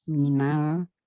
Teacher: jadi nanya itu tidak ditinggikan gitu, nadanya tidak naik ya, karena nun itu dengan lam itu sama-sama tawasud atau bainiyah.